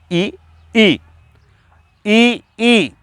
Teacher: तो जो तालु है आपका, तालु से ये उच्चारित हो रहे हैं, और इसकी ध्वनि को नाम देंगे हम तालव्य।